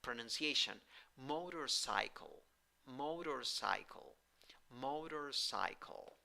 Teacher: the first syllable is the stressed syllable but the third syllable has secondary stress and in the first syllable you have o with a hat · the stressed syllable but the third syllable has secondary stress and in the first syllable you have o with a hat that sounds like oh in the second syllable you have schwa in the third syllable you have i with a hat it